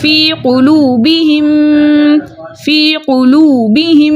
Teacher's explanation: ٹھیک ہے. ہم میم ساکن کو میم متحرک سے ملا کر اس طرح ادا کریں گے دونوں ایک ساتھ مشدد ادا ہوں اور حرکتین مقدار غنہ بھی کریں گے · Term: ادغام شفوی